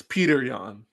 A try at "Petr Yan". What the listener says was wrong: There's no E after the T. There's not Peter. Petr. It's Petr. Petr Yan. Where's the E?